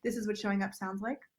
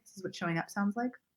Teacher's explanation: in the phrase, this is what showing up sounds like, I emphasize the word up.